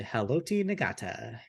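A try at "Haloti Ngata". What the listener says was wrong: That's Haloti Nada. G is silent.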